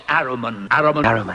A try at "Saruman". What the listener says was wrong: It's pronounced Saruman! The S isn't silent!